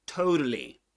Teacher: Totally in American English often sounds like totally with that quick soft D sound. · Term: flap T